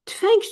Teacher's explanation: Tələffüz zamanı yenə müstəqil işləndiyi haldakı kimi, burada da cingili samitin karlaşması hadisəsini göstərir. Tələffüz olunur tüfəng şəklində.